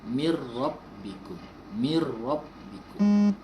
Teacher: Idgham masukkan tanpa dengung. Jangan kita dengungkan dia. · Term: idgham bila gunnah